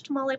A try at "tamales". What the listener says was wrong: oh, why did you say it like that? You said tamale. Tamales.